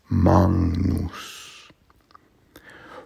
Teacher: the g before the n becomes an ng